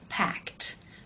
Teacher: when you add the e D it becomes packed because the sound is unvoiced · the e D is also pronounced as an unvoiced consonant and that is the T sound